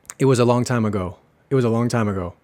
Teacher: Por lo menos en mi acento, suavizo bastante la G en ago.